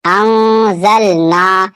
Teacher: यहाँ पे अलिफ से पहले जबर अलिफ मद्दा इसे थोड़ा खींचकर पढ़ना है।